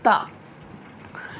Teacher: ता का मखरज है ज़बान की नोक, ज़बान की नोक सामने के ऊपर के दांतों की जड़